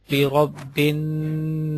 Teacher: What is the gunna? Gunna mean take your voice completely into your nose for a while